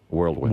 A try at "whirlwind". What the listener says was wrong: Whirl. Whirl. It's not world.